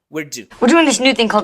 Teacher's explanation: en inglés la punta de la lengua sube se recarga sobre esa parte en donde empieza el paladar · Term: alveolar